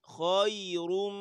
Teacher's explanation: خا موٹی ہے، یا باریک ہے، را پھر موٹی ہے